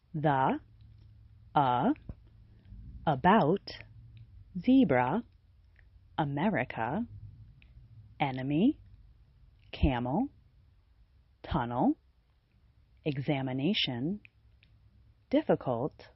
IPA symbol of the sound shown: ə